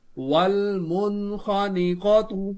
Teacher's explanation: نون ساکن کے بعد غین حرف حلقی آ رہا ہے تو اظہار ہوگا، اس حرف کو بلا غنہ پڑھیں گے. واو لام زبر ول، میم نون پیش من، والمن.